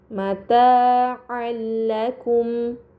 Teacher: terdapat harokat fathatain bertemu dengan huruf lam. Ini dinamakan idgham bila gunnah, maka fathatain dibaca secara melebur tanpa gunnah yang dipanjangkan.